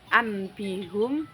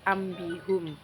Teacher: penggantian nun sukun atau tanwin diubah menjadi mim ketika bertemu ba contohnya anbihum menjadi ambihum yang kelima ikhfa ikhfa artinya samar-samar eh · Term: iqlab